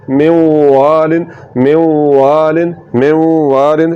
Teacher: जब नून को हम वा में मिलाएंगे तो नून की सिफत गुन्ना बाकी रहेगी · تو ادغام ناقص میں ایک حرف کو جب ہم دوسرے حرف میں ملاتے ہیں تو جس حرف کو ہم ملا رہے ہوتے ہیں اس حرف کی کسی صفت کا باقی رہ جانا یہ ادغام ناقص ہے۔ تو نون میں کیونکہ صفت غنہ ہے، جب نون کو ہم واو میں ملائیں گے تو نون کی صفت غنہ باقی رہے گی، اور ہم اس کو کیسے پڑھیں گے، میوالن، کیسے پڑھیں گے، میوالن میوالن میوالن۔ · آواز کو ناک میں لے جا کر تھوڑا سا لمبا کرنا ہے، اور نون میں جو صفت غنہ ہے اس کو برقرار رکھنا ہے، اس کو باقی رکھنا ہے۔